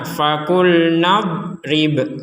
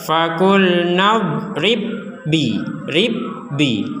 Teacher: huruf ba yang pertama dimasukkan kepada huruf ba yang kedua 100%